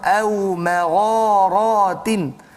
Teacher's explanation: Ma masuk pada ghain, dua harakat di situ, mad asli dan misti.